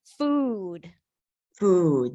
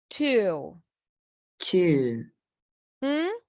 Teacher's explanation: That's the high back vowel sound. Meaning that the tongue pulls all the way back um closer to the soft pallet. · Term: tense ooh